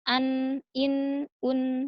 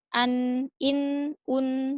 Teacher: lebih terasa ujung lidahnya, menempel dengan gusi bagian, atas, ya, yang bagian dalam. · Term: huruf nun